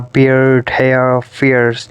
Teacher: the moving towards central diphthongs glide towards schwa vowel